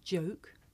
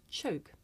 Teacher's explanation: the voiced sound that you hear at the beginning of the word joke and it's voiceless partner that you hear at the beginning of the word choke